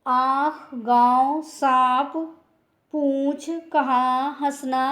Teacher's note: अनुनासिक, इसका उच्चारण नासिका और मुख दोनों से किया जाता है।